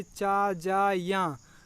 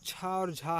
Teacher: चा, जा, या ये है अल्पप्राण और छा और झा है ये महाप्राण है